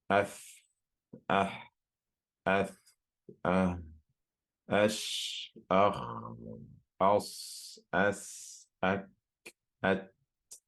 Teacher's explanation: there's a lot of airflow and there's no vibration of the vocal cords, meaning that if you were to put your hand on your throat, you wouldn't feel any vibration there. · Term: hams